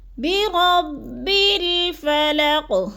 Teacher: قاف کو ساکن کر کے پڑھنا ہے، آخر والے قاف کو، اور تھوڑا سا ہلانا ہے، قلقلہ کرنا ہے۔